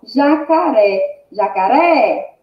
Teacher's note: ré, é o mais forte, é o mais intenso, né? A sílaba mais intensa, né? · Oxítona, porque a última sílaba é a sílaba mais forte, é a sílaba tônica.